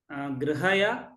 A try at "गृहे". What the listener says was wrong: When you pronounce the halantas, no, instead of grihaya, just go grihai, grihai. Try that. That halant should come out slightly different than full yakara with akara. Ya is like ya plus a. So here it is you only. So grihai.